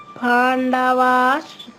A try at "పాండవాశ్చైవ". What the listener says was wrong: పాండవాశ్చైవ అది ఇంకా షా కొంచెం ఎక్కువసేపు అన్నా పర్వాలేదు కానీ రెండు స్పష్టంగా వినిపించాలమ్మా. పాండవాశ్చైవ అంటే రెండు చాలా అయిపోతాయి. మీ షా చెప్పారు కానీ ఇంకా స్పష్టత రావాలి.